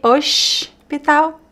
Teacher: The s could be oshpital if you want to speak with a carioca accent.